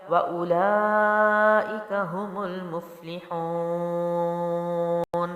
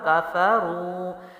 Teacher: واو ساکنہ سے پہلے را کے اوپر پیش ہے تو حروف مد ہے، 1 الف لمبا